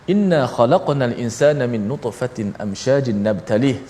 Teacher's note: kita kena baca qalqalah, iaitu pantulan huruf qaf yang mati